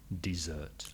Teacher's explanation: you ask for dessert with the stress on the second syllable, dessert. And double S.